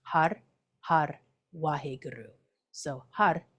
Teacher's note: I'm rolling my RS and you don't have to